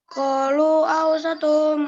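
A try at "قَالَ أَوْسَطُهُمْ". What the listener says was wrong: Kola bukan kolu. Kola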